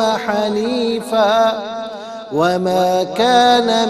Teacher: دو زبر کی تنوین کو واو میں ملا کر واو کی آواز کو غننے کے ساتھ ادا کریں